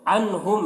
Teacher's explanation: نون ساکن کے بعد ہا ہے، حروف حلقے میں سے، تو نون میں اظہار ہوگا، نون کو ظاہر کر کے جلد پڑھیں گے